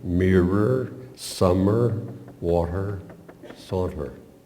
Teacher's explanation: the contrasting feel of enunciating the nasal continuant M's in mirror and summer. Then to move to the plosive T in water.